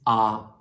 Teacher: in German it's just the pure vowel like in Hindi